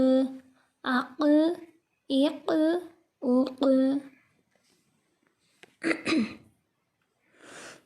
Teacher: قاف حروف قلقلہ میں سے ہے، اس کو ہلا کر پڑھیں گے، اس پہ قلقلہ خوب ظاہر کریں گے.